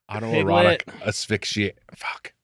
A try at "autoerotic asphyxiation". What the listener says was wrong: I think you're trying to put an extra X in there.